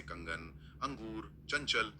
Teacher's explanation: यहां ध्वनि एकदम तेज और स्पष्ट रूप से नाक से आती है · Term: अनुस्वार